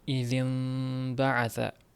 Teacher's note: mana shu g'unna qilib turilgan paytda, ikki harakat ushlangan paytda e'tibor bering, yuqoriga va pastga lablar bir-biriga qattiq yopishmaydi.